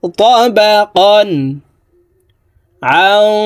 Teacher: তানউইনের পরে ইজহারের হরফ আইন আসছে, এই কারণে এই তানউইন ওয়ালা কফকে গুন্নাহ সারা স্পষ্ট করিয়া পড়ব।